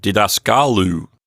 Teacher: the accent has been moved one notch to the right because of the long final syllable the Omicron Upsilon diphthong in that final syllable makes that last